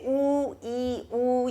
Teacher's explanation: you can feel the tongue high but moving back and forth. E, ooh, can you feel that?